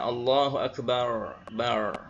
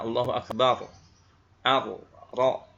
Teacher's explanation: kalau akbar, ujung lidah tidak menempel pada makhrajnya, ngambang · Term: salah makhraj